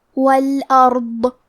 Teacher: حرف الضاد حروف التفخیم میں سے ہے تو ہمیں یہ حرف کو بھاری آواز میں پڑھنا ہے۔